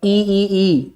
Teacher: ई की साउंड आ रही है हमारी तालु से